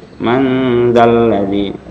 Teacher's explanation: Man dzalladzi, man ketemu dengan za, ikhfa hakiki, samar-samar antara suara nun mati dengan huruf yang ditemuinya. Man disertai dengung.